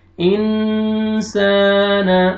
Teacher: الف سے پہلے زبر ہے، الف مدہ، سین کو آپ نے کھینچنا ہے